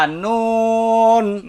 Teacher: নুন জিহ্বার আগা তার বরাবর উপরের তালুর সঙ্গে লাগাইয়া